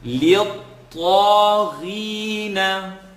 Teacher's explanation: What I want you to hear is the ta is being stretched for two because of the alif maqsura